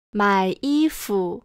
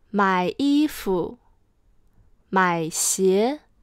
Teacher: 买 has a third tone. It goes down and up.